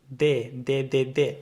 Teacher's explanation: touching your front teeth so generally speaking we can say that the D sound in Spanish the D is a little bit softer and there's not a lot of air flow coming out whereas in the letter D in English there's a little bit · whereas if you say the the d in Spanish the D the tongue is basically touching your front teeth